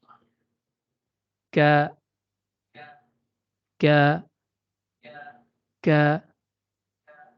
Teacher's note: Huruf kaf keluar dari pangkal lidah yang menempel pada pertemuan antara langit-langit lunak atau yang diistilahkan dengan palatum mole dengan langit-langit keras atau yang diistilahkan dengan palatum durum.